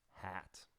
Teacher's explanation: jaw drops tip of tongue stays forward back part of tongue stretches up and the tongue is wide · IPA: /æ/